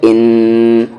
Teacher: ان نون پر تشدید ہے غنہ ہو جا رہا ہے ان غنہ یعنی آواز کو ناک میں تھوڑی دیر رکھنا